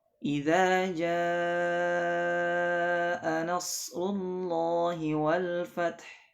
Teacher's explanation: Boleh dibaca panjang 4 atau 5 harakat. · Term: mad wajib muttasil